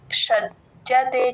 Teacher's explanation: ఇక్కడ మహాప్రణం లేదండి జ కింద జత్తు మాత్రమే ఉంది ప్లేన్ గా చెప్పాలి